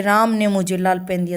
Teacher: यानी राम पर ज्यादा जोर दिया गया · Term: बलाघात